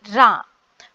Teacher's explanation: நாவின் நுனி மேல் அன்னத்தின் முதல் பகுதியை தொட்டு வருவதால் தோன்றும் எழுத்து